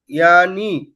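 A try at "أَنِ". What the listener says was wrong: ইয়ানি বলবেন না, আনি। আ আর ইয়া দুটো আলাদা।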